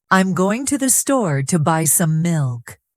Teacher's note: The stressed words are going store, buy, and milk. The other words are softer. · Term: stressed and unstressed syllables